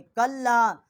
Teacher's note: کلا کاف کو لام کے ساتھ مشدد کیا ہے اور یہاں چھوٹی مد ہے، 3 الف جتنا آواز بلند کیا ہے